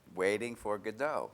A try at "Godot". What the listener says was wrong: Okay, you don't pronounce the T.